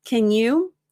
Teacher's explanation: Americans use the reduced form, can. It's almost like the A is gone. So you just imagine a KN.